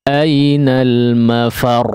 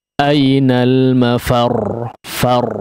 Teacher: Di sini di akhir huruf ra ya, atau di akhir ayatnya diakhiri dengan huruf ra kemudian bertasydid ya. Di sini ada sedikit penekanan sebetulnya ketika huruf ra bertasydid berada di akhir waqaf ya. Ainal mafar, far ya, seolah kita ingin mengucapkan huruf yang bertasydid ya, sebagaimana biasanya ya.